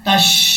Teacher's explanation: وَأَنْتُمْ تَشْهَدُونَ، تا کو جب شین سے ملائیں گے، شین جب بھی ساکن ہوتا ہے تو آواز پھیل کے نکلتی ہے، جیسے تش، اس طریقے سے تا شین زبر تش۔